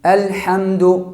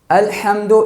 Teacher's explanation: یہاں پر مخرج کے مطابق الحمد میں بڑی حا استعمال ہوا ہے۔ الحمد یعنی وہ حا جو وسط حلق سے نکلتا ہے۔ الحمد اس حا کی جگہ پر ہم نے ہا پڑھ دیا، یعنی وہ ہا پڑھ دیا جو اقصی حلق سے نکلتا ہے۔ یہاں پر ایک حرف دوسرا حرف سے بدل گیا۔